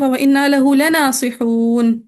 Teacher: مد عارض وقفی کہ دیکھیں واو مدہ تھا واو مدہ کے بعد نون کو ہم نے خود سکون دے دیا